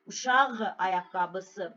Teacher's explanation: Q-dan sonra sait ilə başlanan söz və yaxud da şəkilçi gələrsə nə olacaq? Qğ əvəzlənməsi baş verəcək.